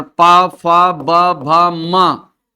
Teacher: प, फ, ब, भ, म ये ओष्ठ से उच्चारित होते हैं।